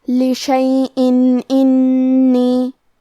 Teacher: کلمت انی میں حرف نون کو 2 حرف کے برابر پڑھیں گے کیونکہ اس پہ تشدید ہے